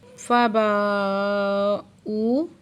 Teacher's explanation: با پہ علی مد ہے، 2 حرکت کھینچ کے پڑھیں گے، اور ہی پہ کھڑی زیر ہے، 2 حرکت کھینچ کے پڑھیں گے۔ فباؤ، با پہ مد متصل ہے، 5 سے 6 حرکت کھینچ کے پڑھیں گے، اور واو ساکن سے پہلے پیش ہے تو واو مد ہے، 2 حرکت کھینچ کے پڑھیں گے۔